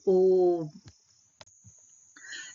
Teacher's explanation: प्लुत स्वर, इनके उच्चारण में जो है ह्रस्व स्वर से तिगुना समय लगता है